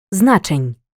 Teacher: ні уже не знаходиться між двома голосними тому і подовження не відбувається